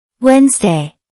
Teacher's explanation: That's 2 syllables. Notice the stress on the first syllable.